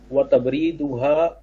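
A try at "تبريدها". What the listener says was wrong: او تبریدها، تبریدها بالکل صحیح لفظ ہے، لیکن را کے بجائے آپ نے دال لگا دیا، را نیچے آتا ہے.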